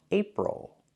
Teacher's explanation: it's a closed relaxed sound plus the dark l